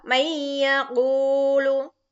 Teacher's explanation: Berarti nun sukun dimasukkan ke dalam huruf iya. Maka suara nun sukun hilang. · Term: idgham bi gunnah